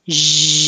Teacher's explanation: think shh and then turn on your voicing. Zh, you should feel vibration.